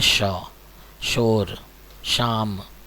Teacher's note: पहला श जो है इसे हम तालव्य श कहते हैं। ये तालू से बोला जाता है।